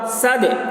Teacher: دال حروف قلقلہ میں سے ہے اور اس پر جزم ہے، اس لیے دال میں قلقلہ ہوگا